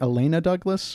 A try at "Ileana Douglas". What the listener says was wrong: You said Elena. It's Ileana.